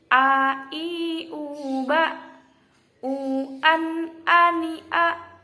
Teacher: Hamzah yaitu makhrajnya pangkal tenggorokan, jelas, mangap